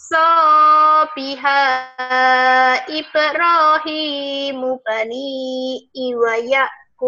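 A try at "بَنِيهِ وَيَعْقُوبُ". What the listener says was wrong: Bukan bani i, bani hi wa yakub.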